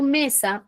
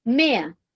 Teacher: A lo mejor eh quiere decir mesa, pero como le dificulta eh articular la la s, te puede decir mea. O también se le dificulta decirla s y en vez de decir, la cambia por una por un artículo, perdón, la va a cambiar por un por una consonante que para él es mucho más fácil de articular.